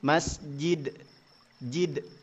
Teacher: dal ini memiliki sifat qalqalah, artinya harus bergetar atau memantul. Makhrajnya tepat, masjid, lidahnya sudah di situ, di langit-langit mulut, dadidubad, masjid, tetapi sifat hurufnya tidak dipakai, yaitu qalqalah, maka tetap salah.